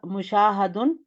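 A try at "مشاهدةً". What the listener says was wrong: نہیں، گولتا کیوں نہیں لگا رہی؟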